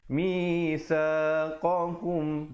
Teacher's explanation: kita sempurnakan saja bunyi mim matinya tanpa dipanjangkan. Jadi mitsaqakum, bunyi saja kum terus masuk. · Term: izhar syafawi